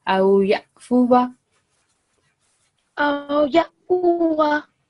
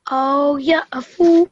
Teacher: So while we're reading in continuity, so we will produce wa sound as well.